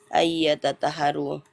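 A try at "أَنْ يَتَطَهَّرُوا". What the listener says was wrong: Talpo bukan tata, talpo. Talpo. Tanya tipis, to-nya tebal.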